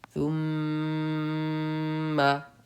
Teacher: ہم نے میم پہ غنہ کیا، کیوں کیا؟ کیونکہ تختی نمبر 13 تشدید کے قاعدے میں نون اور میم پر تشدید ہو تو غنہ ہوگا۔